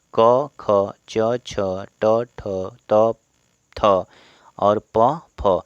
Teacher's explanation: जिन वर्णों के उच्चारण में कंपन पैदा न हो उन्हें अघोष वर्ण कहते हैं। अब इनको बोलने में कंपन ही पैदा नहीं होगा, ठीक है।